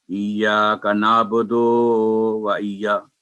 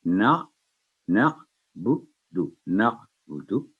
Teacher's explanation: ایاک تو یہ بھی غلط ہوگا، نہ بدو، نہ بدو، یعنی با کے بعد جو پیش ہے وہ بھی لمبی نہیں ہوگی، اور دال پر جو پیش کے بعد ہے وہ بھی لمبی نہیں، 1 سیکنڈ ہوگی